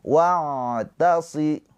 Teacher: maka cara baca ain sukun jangan tertahan, jangan wa'ta, tapi dialirkan.